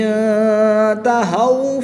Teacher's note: نون ساکن کے بعد تا حروف اخفا میں سے ہے تو یہاں پر اخفا ہوگا یعنی غنہ زمانی کر کے پڑھیں گے۔ واؤ ساکن سے پہلے حرف پر زبر ہے تو یہاں پر واؤ لین ہوگا